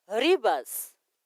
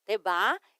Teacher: Temos o V, mas que tem o som de B. Ribas. Você vai dizer, se disse Ribas, ou seja, o R bastante puxado e o V sempre terá um som de B, tá?